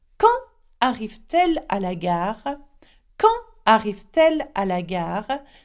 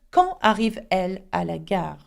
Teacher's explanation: Okay, so we've got to make a liaison. And because there is no consonant at the end of arrive and no consonant at the beginning of elle, okay, we've got to add one in the middle. And we add a T.